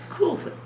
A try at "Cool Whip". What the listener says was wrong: Putting so much emphasis on the H.